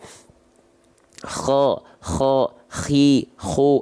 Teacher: Kalau teman-teman tepat melafalkannya dari sini, dia akan mengeluarkan salah satu sifat yang disebut dengan hams, mengalir nafas, tapi karakteristiknya dengkuran atau seperti ngorok · Kho itu dilafalkan makhrajnya dari adnal halqi. Adnal halqi ini artinya adalah tenggorokan paling atas.